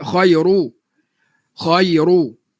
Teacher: Ra bagi depan tebal. Khairu. Khairu. Jangan nipiskan ra. Selalu orang kita bila ra bagi depan dia ternipis, tak perasan.